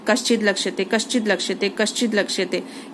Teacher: कश्चित लक्ष्यते, कश्चित प्लस लक्ष्यते, ये इसको बोलते हैं तोरली। जब भी तवर्ग के सामने ल आता है तो त ल में बदल जाता है, तो देखिए। और इसको भी अगर आप बार बार बोलेंगे ना, कश्चित लक्ष्यते कश्चित लक्ष्यते कश्चित लक्ष्यते, ये अपने आप ही त ल में बदल जाएगा।